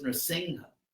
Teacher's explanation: So the M with a dot over it is actually a pure nasal sound. It's not an M, although it's written that way.